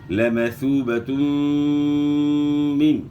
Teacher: 2 پیش کی تنوین کے بعد حروف یرملون میں سے میم ہے، تو یہاں ادغام مع الغنہ ہوگا، یعنی غنہ کے ساتھ آپ نے ادغام کرنا ہے.